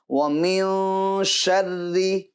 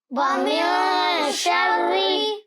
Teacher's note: نون ساکن کی جو آواز ہے اس کو ناک میں لے جائیں گے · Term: اخفا